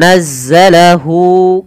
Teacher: kita baca dengan bacaan mad silah qasirah, yaitu dengan memanjangkan huruf h-nya ditandai dengan waw kecil yang ada setelah pada huruf h ini menandakan panjang untuk mad silahnya.